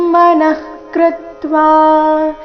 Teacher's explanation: ವಿಸರ್ಗದ ಉಚ್ಚಾರಣೆ ಅರ್ಧ ಕ ರೀತಿ